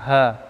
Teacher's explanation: Rokhawah, lawan daripada syiddah, suara tidak tertahan. Nah, berarti suaranya keluar. Ha. Harus jelas.